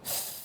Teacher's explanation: The reason is that the TH is voiceless. That means we don't use any voice when we say it.